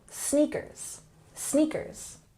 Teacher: And also just be aware of this A sound, A, trainers. And in sneakers, we emphasize the first syllable